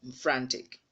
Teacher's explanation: Stress is also on the second syllable from the end, which happens to be its own first syllable.